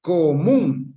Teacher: Termina en N, por lo tanto, se tilda. Común, polisílaba, acentuada en la última sílaba